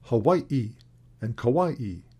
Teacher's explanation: Hawaiian also has a special phoneme, the glottal stop, that does not occur in English, and which appears in words like Hawaii and Kauai.